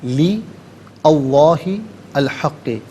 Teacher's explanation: لام کے نیچے زیر ہے، اسے اسم اللہ کی حرف لام کے ساتھ ملائیں گے، درمیان میں سے الف یعنی حمزہ کو حذف کیا جائے گا